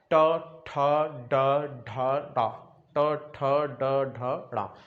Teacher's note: वहां पर आपका मूर्धा मतलब खुरदरे भाग पर आपकी जीभ टच हो रही है। तो खुरदरा भाग होता है मूर्धा, और ये टा वर्ग कौन सा हो गया, मूर्धा हो गया।